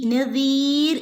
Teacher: 3 അല്ലെങ്കിൽ 5 ഹറക്കത്ത് നീട്ടി ഓതി നിർത്താം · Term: മദ് ആരിലാണ്